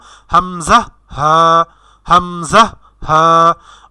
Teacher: 1 নম্বর মাখরাজটি মূলত হলক বা গলার শুরু থেকে উচ্চারিত হয়